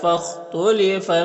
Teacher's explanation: خا حروف مستعلیہ میں سے ہے تو اسے پر پڑھیں گے۔